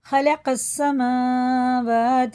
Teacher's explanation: یہ دونوں الف اور لام بالکل نہیں پڑھے جائیں گے، دونوں حروف لکھنے میں آئے پڑھنے میں نہیں آئیں گے، سیدھا یہ قاف سین میں لگے گا